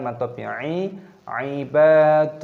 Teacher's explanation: Di sini 'ba' dibaca panjang. Dengan alif, panjangkan selama dua ketukan.